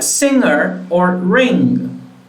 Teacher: Air escapes through your nose, there is vibration, and then you will have the back of your tongue touching your velum. This is why is a velar consonant.